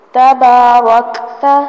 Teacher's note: کاف پر سانس جاری کیا جائے گا کیونکہ کاف ساکن ہے